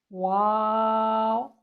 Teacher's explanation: ہمارے ہونٹ دانتوں سے نہ ٹچ کریں بلکہ صرف ہونٹوں کی گولائی سے یہ حرف ادا ہو۔